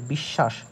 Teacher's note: এই দন্তস্য টা কিন্তু তালব্যস এর মতো উচ্চারণ হচ্ছে